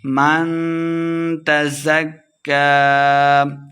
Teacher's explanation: کاف مشدد ہے، زا کو کاف کے ساتھ ملا کے پڑھیں گے